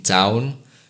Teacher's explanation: In town, you move from A to U, producing ow. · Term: diphthong